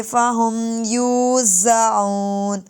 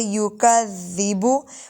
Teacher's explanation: یہ زا سختی والا ہے، ذال نرمی والا ہوتا ہے